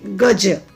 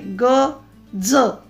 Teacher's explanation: आता गज शब्द आहे पण तो वेगळा उच्चार आहे. ग ज दंतमुलीय आपली जीभ दाताच्या मुळांना लागते गज म्हणताना. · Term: तालव्य